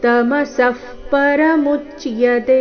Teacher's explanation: ತಮಸಃ ಪರಮುಚ್ಯತೆ ಕೊನೆಯತೆ ಮಾತ್ರ ದೀರ್ಘ, ಮಧ್ಯದಲ್ಲಿ ಎಲ್ಲಿಯೂ ದೀರ್ಘಾಕ್ಷರ ಇಲ್ಲ